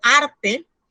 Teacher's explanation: como arte, la sílaba tónica es ar